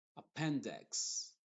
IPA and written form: əˈpɛndɪks (Appendix)